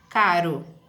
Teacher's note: é TEP porque é um tapa que a língua dá, né, no palato, no caso na região ali alveolar, ou palatal também, né?